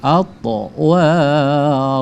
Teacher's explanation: Atwara, qalqalah sugra ya, po-nya dipantulkan. Atwara, ro tebal, tafkhim ya, dibaca tebal tuh ya.